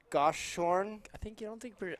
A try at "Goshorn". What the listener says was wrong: I don't think you pronounce the H.